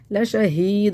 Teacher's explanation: बहुत से लोग शहीद पढ़ते हैं, शहीद नहीं, ला शहीद, हाथ को सीने से निकालना है और दाल पर कलकला करना है